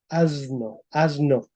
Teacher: Y este proceso se llama asimilación, asimilación de voz. Asimilación de voz, porque la N es sonora, la S no es sonora. Entonces hace que la S se haga sonora.